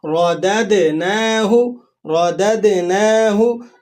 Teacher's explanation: دوسرا دال ساکن ہے تو آپ نے وہاں پر قلقلہ ادا کرنا ہے · را کے اوپر حرکت ہے، آپ نے اس کو موٹا کر کے پڑھنا ہے